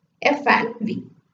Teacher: contact between the upper incisor and the lower lip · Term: labia density